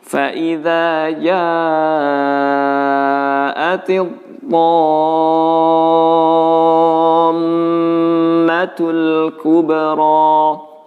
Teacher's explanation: Dan mim yang bertasydid ditahan gunnahnya, ya, standarnya 3 ketukan. Jadi jangan langsung tekan, langsung lepas.